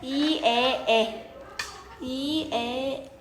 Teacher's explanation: 저모음으로 이렇게 내려갈수록 입의 크기가 점점 커지는 거 느껴져? 이에에 그리고 고모음일 때 이라고 했을 때 혀의 위치가 가장 높고 에라고 발음했을 때 혀의 위치가 가장 낮았죠?